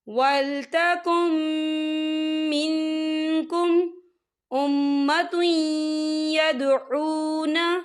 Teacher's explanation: نون ساکن کی آواز کو ناک میں چھپائیں گے